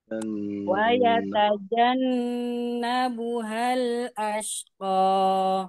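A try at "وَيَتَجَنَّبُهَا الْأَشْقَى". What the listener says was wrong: Ya, sip. Terus.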